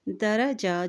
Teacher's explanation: یہاں وقف کرنے کی صورت میں حرکت ساکن ہو جائے گی۔ درجات، جیم کے اوپر کھڑی زبر ہے تو اس کو ایک حرکت لمبا بھی ادا کریں، درجات، ٹھیک ہے۔